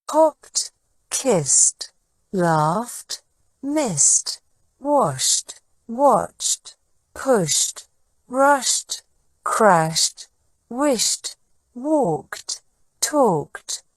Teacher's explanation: the past tense ending e d is pronounced with a t sound instead of a D sound this happens when the verb ends in an unvoiced sound such